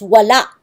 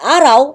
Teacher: In these two words, U is not a vowel but a consonant, and does not form a dipthong